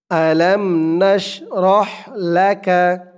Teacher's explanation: হার আওয়াজটা গলার ভিতর থেকে চিকুন হয়ে আসবে আওয়াজটা বের হবে ফ্যাশ ফ্যাশ এরকম শব্দ হয়ে